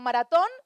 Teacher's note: Tenemos palabras como maratón, donde ton es más fuerte